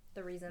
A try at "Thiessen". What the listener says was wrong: oh it's not thiessen it's tease we've yeah we asked him to pronounce his name for us and he said it was teasing right that's right silent h